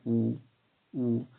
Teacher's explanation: वृत्ताकार स्वर उच्चारण करते समय होठ, होठ जो है आपके गोल या गुलाई में हो जाते हैं